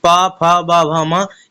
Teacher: प फ ब भ म यानी ओट से टच हो रहा है तो ये आपका ओस्ट हो गया